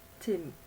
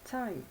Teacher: Au départ, c'était une voyelle brève, et ensuite c'est devenu une diphtongue, c'est-à-dire un son complexe qui est un glissement d'une voyelle vers une autre, I.